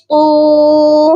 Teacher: قا کو موٹا کر کے پڑھیں گے اور ایک الف کے برابر لمبا کر کے پڑھا جائے گا کیونکہ قا کے ساتھ واو ہے.